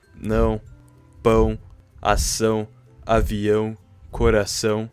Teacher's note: This sound doesn't exist in English. It's nasal, it comes from the nose, not the mouth.